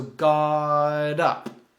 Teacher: the T sounds like a d and it links together so got up it sounds like God up God up um